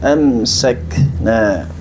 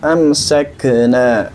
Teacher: Dan pada kata mimma amsakna, kaf itu memiliki sifat syiddah juga selain hamas, maka cara bacanya amsakna. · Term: syiddah dan hamas